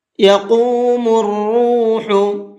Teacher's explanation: قاف کو کھینچ کر کے بھی پڑھیں گے اور پر کر کے بھی پڑھیں گے